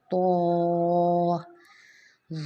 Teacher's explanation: زبان کی جو نوک ہے اس کو ہم نے اوپر کے دانتوں کی جڑ کے ساتھ لگانی ہے ، اور پھر ہم نے پڑھنا ہے تو، موٹا کر کے